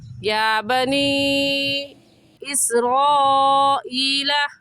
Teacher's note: حروف مدہ اس میں یا مدہ ہے، کیونکہ یا ساکن سے پہلے زیر آ گئی تو یا مدہ کہلائے گا، اور قاعدہ ہے کہ حروف مدہ کے بعد حمزہ اگلے کلمے میں آ جائے تو اس مد کا نام ہوتا ہے مد منفصل اور مد جائز، اور اس مد کو ہم 3 الف کے برابر کھینچیں گے، اس سے کم یا زیادہ نہیں کھینچیں گے